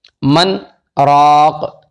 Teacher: ان دونوں کلمات کو پڑھیں گے نون کو ظاہر کر کے